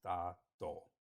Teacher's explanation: Da Dou, both fourth tone